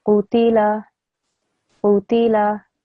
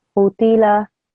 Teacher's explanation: the qaf here is a thick and round letter. I'm making sure I do that, but I'm also making sure that my qaf sound is only 1 second long, as is my ta and my lam, 1 second long.